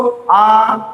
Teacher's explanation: আ, দেখো জীব কেন্দ্রে অবস্থান করছে, জীব মাঝে আছে, এগোচ্ছেও না পিছোচ্ছেও না। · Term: কেন্দ্রীয়